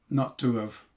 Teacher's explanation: H, grammatical H, disappears in normal speech. So that means that have actually begins with a vowel.